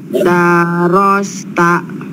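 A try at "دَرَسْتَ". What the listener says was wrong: Ulangi, daknya pendekan.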